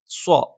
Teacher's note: നാവിന്റെ കൂർത്ത അറ്റത്തിന്റെ മുകൾഭാഗം രണ്ടു വരി മുൻപല്ലുകൾക്കിടയിൽ പിന്നിലായിട്ട് വെക്കുകയും നാവിന്റെ മധ്യഭാഗം മുകളിലേക്ക് ഉയരുകയും ചെയ്യും മുകളിൽ സ്പർശിക്കില്ല